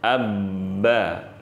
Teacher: huruf ba keluar dari ya bertemunya kedua bibir, bibir atas dan bibir bawah